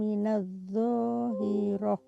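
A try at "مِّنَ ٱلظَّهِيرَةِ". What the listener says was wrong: Bukan dho-nya dipanjangkan, hi-nya yang di ain ke bawah.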